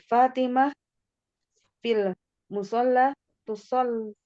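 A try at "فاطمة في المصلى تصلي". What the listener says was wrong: Bagus, mantap, mumtaz.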